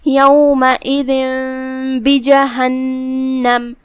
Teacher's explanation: اقلاب کا معنی ہے پلٹ دینا یا بدل دینا، تو ہم تنوین کو میم میں پلٹ کے غنہ کے ساتھ یہ حکم کو ادا کریں گے · کلمت بجہنم میں یہاں نون پہ تشدید ہے تو ہم 2 حرف کے برابر نون کو ادا کریں گے